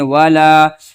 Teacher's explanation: الف سے پہلے اس لام کے اوپر زبر ہے، لہٰذا اس کو الف مدہ کہیں گے، اس لام کو ایک الف کھینچیں گے